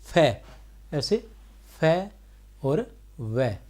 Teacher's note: दंतोष्ठ्य ऊपर के दांत एवं नीचे के ओष्ठ के मिलने से उच्चारित होता है। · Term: दंतोष्ठीय व्यंजन, दंतोष्ठ्य व्यंजन